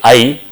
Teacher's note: the tongue hump starts from middle and it move towards the front